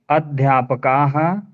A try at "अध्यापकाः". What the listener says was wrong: देखिए, का को ज्यादा खींचिए, विसर्ग को ज्यादा मत खींचिए।